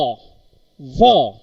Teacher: The lower lip touches to the upper part of the teeth. That time f sound is produced. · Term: labiodental